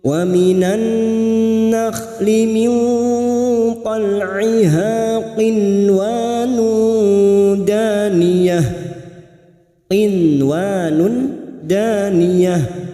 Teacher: bertemunya nun sukun dengan huruf waw, dibaca jelas tanpa mendengung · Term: idhar mutlak